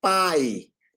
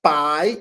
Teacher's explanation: eu tenho o A como vogal e o I como semivogal. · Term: ditongo